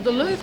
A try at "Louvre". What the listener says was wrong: The R is silent.